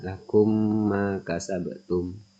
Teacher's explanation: Lalu yang terakhir yaitu idgham mutamasilain atau idgham mimi, di mana idgham mimi ini apabila terdapat mim sukun atau mim mati bertemu dengan huruf mim, maka dibaca seolah-olah menjadi mim bertasdid dengan disertai berdengung atau gunnah sehingga mim sukun menyatu dengan huruf mim di depannya.